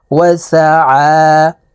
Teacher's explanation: আইনের উপরে খারা জবর থাকার কারণে এই আইনকে একালিপ টেনে পড়ব।